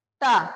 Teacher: टा बोलते समय जहां पे तुम्हारी जिह्वा टच कर रही है वो क्या होगा, मूर्धा है वो स्थान